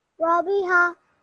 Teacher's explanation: So just don't leave it at a jerk. Don't make a jerk sound at the end of the ha.